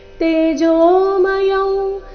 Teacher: रूपं परं दर्शितमात्मयोगात् तेजोमयं विश्वमनन्तमाद्यै, तेजोमयं, तेजोमय और उसके बाद है अनुस्वार जिसका उच्चारण हमें नासिका उ की तरह करना है